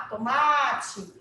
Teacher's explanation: Porque a sílaba tônica é o ma. Tomate. A sílaba que se estende é o ma, certo? Toda paroxítona é acentuada, pessoal, ou não?